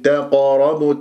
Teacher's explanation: قاف مفخم مرتبة رابعة ومقلقلة، إذا قلقلة لازم أنا أضرب المخرج وأهرب بسرعة، ما أقف، تقربوا، هكذا وقفت على المخرج، إذا كيف تقربوا، ولا تقلقل بقاف مرققة، تقربوا، لا، تقربوا، لازم تعطيها تفخيم، إجباري تفخيم.